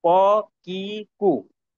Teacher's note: 4 number মাখরাজ হলো জিহ্বার গোড়া থেকে নরম তালুর সাথে লাগাইয়া। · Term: কফ